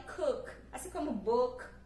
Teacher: Este O do cook é bem mais parecido com o nosso ozinho do com circunflexo. Então, fala ozinho fechado.